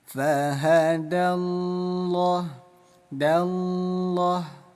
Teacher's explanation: Artinya dibaca tebal. Bunyi lam kita rubah menjadi bunyi loh. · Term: lam tafkhim